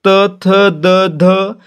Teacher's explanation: ज्या वर्णांचा उच्चार करताना आपली जीभ आपल्या दातांना स्पर्श करते त्यांना काय म्हणायचं, दंत्यवर्ण म्हणायचं